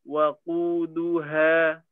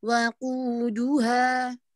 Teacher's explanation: semua terdengarnya U dan tidak ada suara yang dengung ya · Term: wau sukun